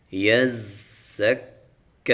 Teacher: زا کے اوپر سیٹی نکالنی ہے اور کاف کے اوپر کھڑا زبر ہے تو اس کو تھوڑا سا لمبا کریں گے، 2 حرکات